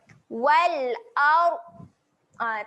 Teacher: Sebab kalau kita bunyikan huruf dad, takut dia jadi lantun. Huruf dad ketika mati dia tak ada lantunan. Dia kena tahan. Jadi jangan bunyikan dekat huruf dad tu.